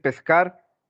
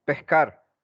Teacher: La S pronunciada como más bien como una J o como una aspiración. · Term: aspirada